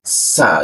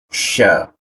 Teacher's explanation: Huruf sa itu penekanannya di ujung lidah. Huruf sya di tengah lidah.